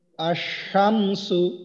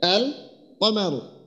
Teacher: তো এই যে আশামসু লিখতে গেলে এখানে দেখেন আমাদেরকে যেটা করতে হইতেছে, সেটা হলো যে লামটা বাদ দিতে হইতেছে, আর শিনের উপরে অর্থাৎ লামের পরে যে হরফটা, ওটাতে তাসদিদ যোগ করে পড়তে হইতেছে।